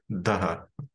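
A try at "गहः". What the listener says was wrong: Gaha, not daha. Gha. Okay, guttural. Not dental.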